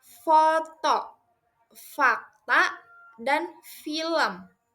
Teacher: Yang kedua, hembuskan udara keluar melalui celah sempit antara bibir bawah dan gigi atas. Jangan gunakan pita suara, tidak ada getaran di leher sehingga bunyinya seperti hembusan angin halus. Dan yang ketiga, jangan tutup rapat bibir dan gigi. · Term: bunyi F